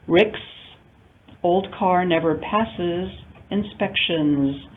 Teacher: All three possible pronunciations, the voiceless S, the syllabic is, and the voiced z pronunciation of an S ending in English.